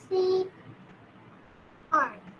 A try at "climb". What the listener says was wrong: Why C R? Climb. I'm not saying crime. I'm saying climb.